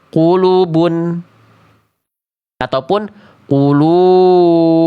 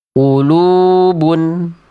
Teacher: Mad thobbi'i atau mad asli. dibaca dengan kadar panjang dua harakat